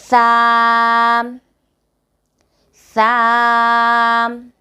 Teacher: زبان کی نوک کو اوپر کے سامنے والے 2 دانتوں کے سرے سے لگانا ہے تو حرف سا ادا ہوگا